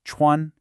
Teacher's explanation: high and flat, first tone